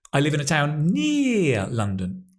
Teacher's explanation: I stress near. The other words are not stressed so much and they almost disappear because we're repeating them. They're not important. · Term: sentence stress